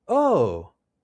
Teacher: Oh, with the rising intonation shows that we're curious about something or we're interested.